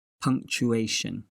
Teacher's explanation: it's a four-syllable word with the stress on the 3rd syllable